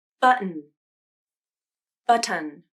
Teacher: the last syllable button which one sounds more natural button button native speakers will almost always pronounce this word using a stop t in the place of the t sound and then omit the vowel and transition